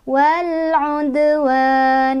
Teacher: Dalnya kokolah, mantul, tapi pantulannya kecil. وَالْعُدْوَانِ, kayak selewat aja.